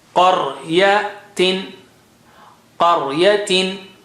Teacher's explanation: قا is high sounding, ra is thick.